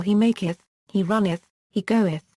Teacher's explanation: the third person singular form with the suffix -eth [ǝθ], pronounced as a full syllable